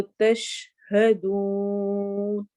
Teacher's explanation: شین کے اندر آواز کے پھیلنے کی صفت موجود ہوتی ہے، اس لیے اس کو جب پڑھتے ہیں ہم تو تشہدون نہیں پڑھیں گے، تش کی آواز اس میں آتی ہے.